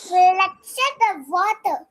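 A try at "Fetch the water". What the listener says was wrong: No L. Fetch. Once there is no L over there. Fetch, fetch. Fetch.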